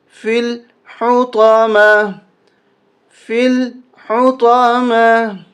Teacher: فا کو لام کے ساتھ ملائیں گے، یہ یا نہیں پڑھی جائے گی